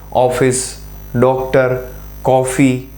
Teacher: વધારે ખુલે બરોબર ઓફિસ ડોક્ટર કોફી તો એમાં ઓ બોલતી વખતે ઓ ના ઉચ્ચારણ વખતે શું થાય છે મોઢું જરા વધારે ખુલે છે એટલે એને વિવૃત સ્વરો કહેવાય